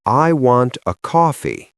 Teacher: I can reduce I wanta to I wanna, but I must pronounce coffee clearly.